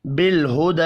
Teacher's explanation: بالہدی لام ساکن پر قلقلہ نہیں کرنا، کھڑی زبر کو ایک الف کے برابر کھینچ کر پڑھیں گے